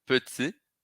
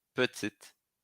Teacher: petit para no I. No feminino, petite. Pronuncio o T.